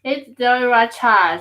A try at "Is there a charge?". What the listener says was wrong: No, I need you to say that S. Concentrate. Is there a charge?